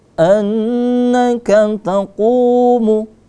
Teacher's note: ku-nya kita baca agak panjang karena situ mad tabi'i juga, ada waw mati. Dan sebelum huruf waw mati ada huruf dhammah, ada tanda baca dhammah, ya, maka dia menjadi mad tabi'i, panjangnya 2 harakat.